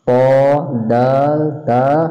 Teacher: জিহ্বার আগা সামনের উপরের দুই দাঁতের গোড়ার সাথে লাগাইয়া প, দাল, তা হরফ উচ্চারিত হয় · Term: 11 নম্বর মাখরাজ